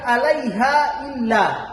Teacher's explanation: kemudian ada alif, kemudian harus dipanjangkan berkisaran sampai 6 ketukan, maka disebut dengan mad jaid munfasil